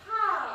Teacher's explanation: 파 하고 터진다 해서 파열음